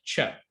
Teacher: these are sounds uh that begin as a stop but are released as a fricative · are kind of you're pronouncing basically for the sound like cha you're basically simultaneously pronouncing a ta and the show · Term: affricates